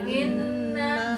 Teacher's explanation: Inna ditahan. Inna ditahan tuh masukin ke hidung